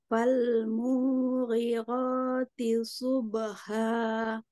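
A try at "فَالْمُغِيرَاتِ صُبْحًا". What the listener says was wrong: Ya, agak kita pedaskan lagi huruf H-nya. Subha. Tapi munya pendek ya. Oh ya, falmughi. Munya pendek ya.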